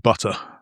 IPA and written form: ˈbʊtə (Butter)